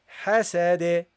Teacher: also bounce because it's it's you stop on it okay and the D when you stop on it you give it a bounce